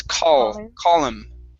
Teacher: So don't hit the top of your mouth with your tongue on call. You don't want to say caught him.